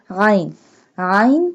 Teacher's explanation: عین pronounced from the middle part of the throat